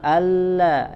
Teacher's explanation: alla ada hamzah kemudian la tasydid fathah, ya, sama-sama dibaca tipis. Zi, ya, sama juga zi tipis, kemudian ujung lidah bertemu dengan ujung gigi seri bagian atas.